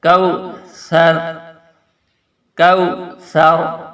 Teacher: اعطیناک الکوثر، کاف باریک پڑھنا ہے، اور یہ واو لین ہے، کوثر، اور یہاں پر سا کو نرمی سے ادا کریں گے۔ اوپر والے دانتوں کے نیچے والی سائڈ جو ہے اس پر اپنی زبان کی نوک کو لگا کے نرمی سے سا ادا کیا جائے گا